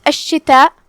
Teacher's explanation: شین پہ تشدید ہے، 2 حرف کے برابر ہم شین کو پڑھیں گے، کیونکہ تشدید کی اصلیت 2 حرف ہوتی ہے.